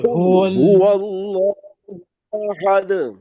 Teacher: اللہ کا لام موٹا پڑے گا